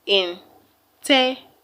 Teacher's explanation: The third syllable from the end of the word is TE. That's why TE is being stressed.